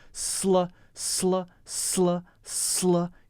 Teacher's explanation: you cannot make a space because it's not an extra syllable it's not a loft that's a common mistake to make that